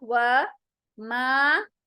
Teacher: वाव का मखरज होठों को गोल बनाते हुए निकलेगा